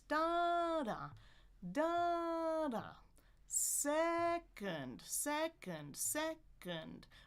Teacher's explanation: We've got that syllable stress on the first syllable. That's the most normal pattern.